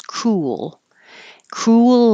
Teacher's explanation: when your lips go forward for the U they come back for the L and it almost is two syllables